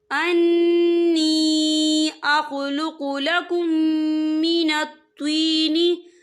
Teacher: यहाँ देखिए अख़्लुक़ु लकुम, यहाँ मीम साकिन है, मीम साकिन के बाद जो है मीम मुशद्दद वाला हरूफ आ रहा है, तो यहाँ पर इदगाम शफ़ी होगा। हम पिछले मीम को अगले मीम में मदगम करेंगे और यहाँ गुन्ना भी होगा